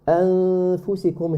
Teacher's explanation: Here the ghunna is muraqqaqa because after the noon as-sakin we have a letter fa which is harf muraqqaq.